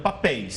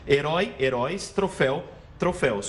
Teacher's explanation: Porque não é paroxítona, é oxítona, ou seja, a última sílaba é a forte.